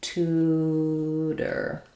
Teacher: So the initial T is a released t sound, and then this one is flapped, so it sounds like tutor.